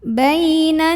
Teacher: karena ada ya sukun yang didahului baris fathah maka dibacanya cukup dilembutkan atau dilunakkan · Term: huruf Lin